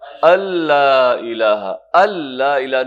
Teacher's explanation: تو اس کو کہتے ہیں ادغام تام. ادغام تام یعنی کمپلیٹ ادغام، جو نون ہے وہ اس میں سے حذف ہو جاتا ہے